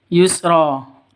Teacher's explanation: Ro-nya dibaca panjang 2 ketukan.